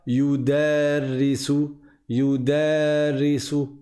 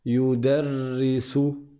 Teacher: Et c'est le ra que l'on va dédoubler, qu'on va doubler. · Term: shadda